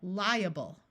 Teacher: when you have I a in the middle of a word it can have the long I sound rather than the short I